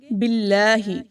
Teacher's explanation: لام کو موٹا مت کیجیے، لام باریک پڑھا جائے گا